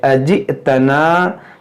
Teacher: یہ حمزہ ساکنہ ہے, اس کو جھٹکا دے کر پڑھیں گے